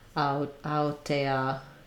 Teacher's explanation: rather than teh-ah, you might have a little bit more of a schwa there.